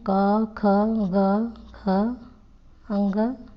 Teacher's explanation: ये कंठ नाम से जाने जाते हैं क्योंकि इनका उच्चारण स्थान कंठ है।